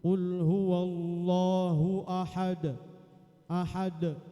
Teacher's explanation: D-nya itu agak suaranya ada doyong ke suara fathah. Nah, itu qalqalah.